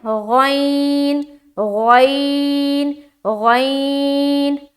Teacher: یہ غین جو ہے نا یہ بھی موٹے حروف میں سے ایک ہے، تو اس کو بھی منہ بھر کر نکالنا ہے، غین غین غین۔ غین کا مخرج جو ہے نا ادنائے حلق یعنی منہ کا حلق کا طرف کا جو حصہ ہوتا ہے نا وہ ہے غین کا مخرج